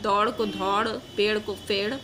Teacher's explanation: महाप्राणीकरण की प्रवृत्ति है, जैसे दौड़ को धौड़, पेड़ को फेड़